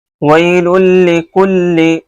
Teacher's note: تنوین یا نون ساکن کے بعد لام یا را آتا ہے، یعنی حرف یرملون میں سے اگر لام را آ رہا ہے تو یہاں ادغام تام ہوتا ہے، اس کو بغیر غنہ کے ساتھ پڑھتے ہیں. ویل لکل، کلی دیکھیں کاف کے اوپر بھی پیش ہے اور لام کے نیچے بھی زیر ہے.